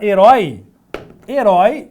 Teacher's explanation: herói é uma oxítona que termina com esse ditongo aberto